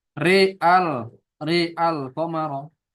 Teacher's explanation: Maka wakfan di imalati ro. Kalau dia wakaf dibaca dengan imalah ro-nya saja dan hamzahnya tetap alif.